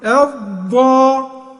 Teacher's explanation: خلي بالك لو طرف لسانك لزق فوق عند الاسنان الاماميه يبقى انت بتجيب دال تخينه، لازم تجيب الضاد ديت من حافه لسانك اللي هي اللسان من الجنب مع الاضراس العليا